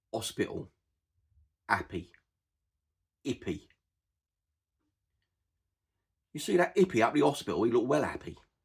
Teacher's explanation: another thing that's very, very common in Cockney and Estuary is to drop an initial H. Hospital, happy, hippie.